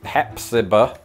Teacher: definitely don't elongate that final vowel as if you are a sheep